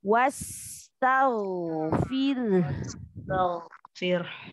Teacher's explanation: Sifat sifat rokhawahnya, dia ada sifat namanya rokhawah, mengalir suaranya.